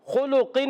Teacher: खुलुकिन में खा हुर्फ़े हल्की में से है, हुर्फ़े मुस्तालिया में से भी है, और खा पर पेश है, मोटा रहेगा, लाम पर पेश है। खा और लाम जो है होंठों की गोलाई से अदा होंगे, मगर खा को पुर करेंगे, लाम को पुर नहीं करेंगे। काफ को पुर करेंगे, काफ हुर्फ़े मुस्तालिया में से, ज़बान की जड़ और तालु के नर्म हिस्से से काफ अदा होता है।